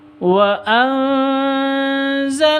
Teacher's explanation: nun sukun bertemu dengan za, bacaan ikhfa hakiki. Nah, ini dibaca panjang karena ada alifnya, diawali dengan fathah, maka dibaca panjang 2 harokat.